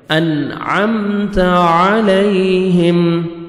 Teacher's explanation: عین پڑھیں گے اپنے مخرج سے ادا کریں گے تاکہ حمزہ میں ساؤنڈ مکس نہ ہو ، یا لین ہے نرمی سے ادا کریں گے، علیہم، ہا